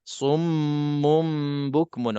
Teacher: kita ada mim musyaddadah wajibul gunnah. Jadi dengung 2 harakat